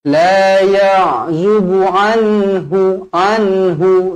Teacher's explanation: nun dibaca jelas dan terang, ada tanda mati di situ, bertemu huruf ha. Izhar halqi.